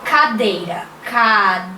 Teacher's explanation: A sílaba dei é a mais forte. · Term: palavra paroxítona